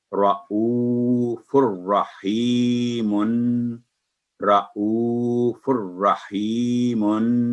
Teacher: आगे है तनवीन, फा पर 2 पेश है, तनवीन कहते हैं इसे, उसके बाद रा है, तो इसको मिलाते वक्त भी तनवीन फा के ऊपर जो ऊपर है उसकी नून खत्म हो जाएगी और एक दम्मा के साथ रॉ के साथ मिलाएंगे, रॉ की तशदीद का ख्याल रखेंगे, रॉ को 2 दफा पढ़ेंगे